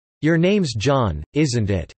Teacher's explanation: those asking for confirmation have falling tone